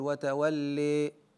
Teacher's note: درجه الاماله وهي تقريب الالف من الياء والفتحه من الكسره كثيرا